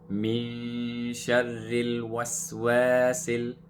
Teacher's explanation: the lam, when we connect it, we hold the sukoon and make a light sound. Min sharril waswasil.